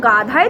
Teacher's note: হ ধ্বনির একটি মহাপ্রাণ ধ্বনি, এর মহাপ্রাণতা আগে সরে এসে দয়ের সাথে যুক্ত হয়েছে, এর ফলে দ হয়ে গেছে ধ।